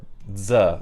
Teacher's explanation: [dz] which is a combination of [d] plus [z]